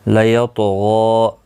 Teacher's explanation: کلا، مد منفصل ہے، 3 الف کی مقدار کے برابر کھینچ کر پڑھیں گے، نون مشدد پر گنہ ہوگا، لام ساکن کو ہلانا نہیں، نون کا اخفا ہوگا، سا الف مدہ ہے، 1 الف کی مقدار کے برابر کھینچ کر پڑھیں گے۔ لیطغی، طا ساکن پر قلقلہ ہوگا، طا موٹا بھی پڑھا جائے گا، غائن بھی موٹا پڑھا جائے گا